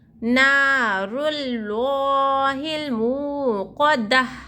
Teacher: اللہ کے لام سے پہلے حرکت پیش ہے تو اللہ کے لام کو موٹا پڑھنا چاہیے، اللہ کا لام پور پڑھا جائیں گا.